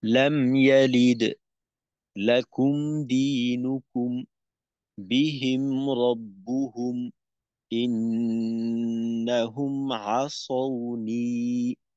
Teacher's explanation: মিম সাকিনের পরে যদি বা এবং মিম ব্যতীত অন্য হরফ আসে তখন মিম সাকিনকে গুন্না ছাড়া স্পষ্ট করে পড়তে হয়, এখানে গুন্না হবে না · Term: মিম সাকিনের ইজহার